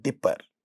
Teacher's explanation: this pa is not at the initial position of this stressed syllable. Therefore, this is not getting aspirated